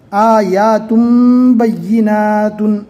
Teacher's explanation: یہاں پر تن ہے لیکن تنوین کو میم سے بدل کر پڑھیں گے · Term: اقلاب